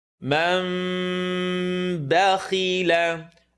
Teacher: The meme is going to make a vibrating sound between our lips. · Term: baby meme